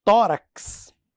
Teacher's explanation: é o x com esse som de KS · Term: dífono